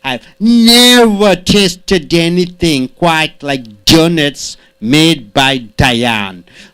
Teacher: never should be stressed more